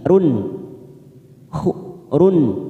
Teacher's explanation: Run ada duma tanwin pada huruf ora bertemu ain, kita baca jelas tanpa mendengung, namanya bacaan idhar halqi